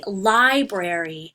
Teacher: the most emphasis or the most booth if you will so when you say library the stress is actually on the first syllable it's not on the second one